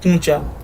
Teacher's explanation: نون غنہ کا اضافہ کر دیتے ہیں، جہاں نون غنہ نہیں ہونا چاہیے وہاں ایک اضافہ کر دیتے ہیں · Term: نون غنہ کا زائد استعمال